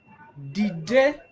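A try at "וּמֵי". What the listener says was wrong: It's actually a vav at the beginning, a V may.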